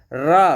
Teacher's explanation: जिन व्यंजनों के उच्चारण में वायु जीभ से टकराकर लुढ़कती हुई लगती है वे लुंठित व्यंजन कहलाते हैं।